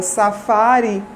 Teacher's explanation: observe que esse I final é um I que é reduzido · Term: vogais reduzidas